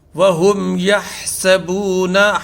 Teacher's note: ہا کی آواز کلیئر آنی چاہیے حلق سے